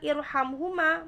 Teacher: ra sukun di sini dibaca tafkhim karena didahului hamzah wasl